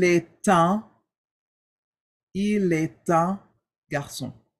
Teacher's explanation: A, the T of A, and the U of un, we do this thing called the liaison. We attach the T to that U, to that un, so that it flows. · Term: la liaison